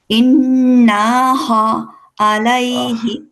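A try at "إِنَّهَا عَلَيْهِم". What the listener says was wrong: কেন ইন না হচ্ছে কেন? ইন্নাহা হাতে টান দেন, নট নাতে।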